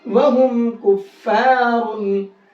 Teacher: اس میم کو صاف صاف پڑھیں گے, اب غنہ اخفا نہیں کریں گے.